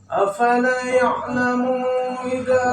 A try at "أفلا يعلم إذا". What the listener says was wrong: Munya pendek. Ya'lamu idza. Begini, yang pertama lamnya panjang, afala, kemudian ma-nya juga panjang.